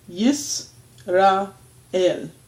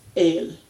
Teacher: Because there is a vowel underneath the aleph, that's going to take the sound in and of itself. So there's this little, almost inaudible stop between the resh and the aleph. So you get yis, which that is an audible stop.